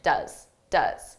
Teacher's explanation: does is an auxiliary verb so we can pronounce it very quickly in an unstressed pronunciation